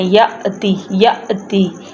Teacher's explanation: یا کے ساتھ حمزہ کے اوپر ساکن ہے. جہاں پہ حمزہ کے اوپر ساکن آ جائے وہاں پہ جھٹکے سے پڑھتے ہیں، رک کے جھٹکا لگاتے ہیں